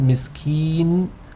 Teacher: make sure that the noon the nasal sound of the noon doesn't kick in prematurely